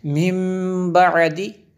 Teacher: بعد، دیکھیں نون ساکن کے بعد با حروف با ہے، تو نون ساکن کے بعد اگر با ہو تو اقلاب ہوتا ہے اور یہاں پہ غنہ ہوگا جی